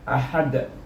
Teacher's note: Kita bila wakaf kita gunakan hukum qalqalah, iaitu ketika wakaf maka bunyinya ahad, ada lantunan huruf dal, kerana huruf dal adalah huruf qalqalah